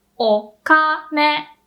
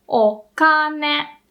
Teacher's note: Low, high, high, o kane. So the pitch of the third mora can be the same as the one in the second mora, but just the first and second have to be different.